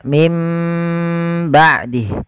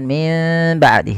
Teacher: cara baca yang pertama dengan idbaq yang kedua dengan furujah tapi kita mengambil yang idbaak yaitu menempelkan bibir itu secara rapat maka mim ba'dih bukan Min ba'di tapi dia m Ya ditahan